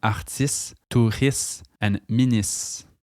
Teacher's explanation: words ending in iste will sound more like is, so words like artiste, touriste, and ministre become artistes, touristes, and ministres.